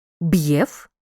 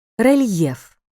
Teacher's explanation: при апострофі Роздільна тверда адже цей знак указує на твердість попереднього приголосного при м'якому знаку теж Роздільна вимова але м'яка бо ця літера може стояти тільки після м'яких приголосних д т